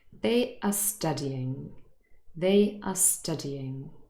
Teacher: acts as an auxiliary verb to help us form this tense the main verb is studying and that is stressed but the positive auxiliary no it's not stressed and it is